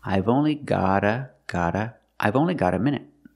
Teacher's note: a minute I've only got a minute got the T and got is between vowels so it's a fast D